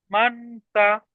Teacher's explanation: ইকফার পরে, নুন সাকিনের পরে হুরুফের ইকফার 15টি অক্ষরের মধ্যে সা এসেছে, তাই নুন সাকিনের আওয়াজকে নাকে তুলে এক আলিফ গুন্না সহ পড়তে হবে।